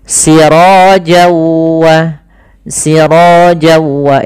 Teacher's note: ketemu waw maka n-nya hilang, masuk ke waw, jadi waw-nya double. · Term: idgham bi gunnah